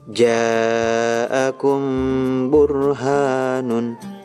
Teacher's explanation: Ikhfa syafawi, setiap mim sukun bertemu dengan huruf ba dibaca samar disertai dengung